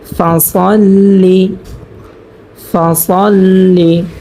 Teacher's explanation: লাম জের লি, ফাসল্লি। এখানে কোনো টান করব না, এখানে সবগুলো হরকত হয়েছে, আমরা তাড়াতাড়ি পড়ব।